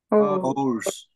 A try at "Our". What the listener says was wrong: Our. Sin la S. Sin la S. Our.